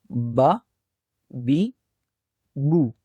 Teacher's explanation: دونوں ہونٹوں کو آپس میں ملانے سے حرف با کی آواز ادا ہوتی ہے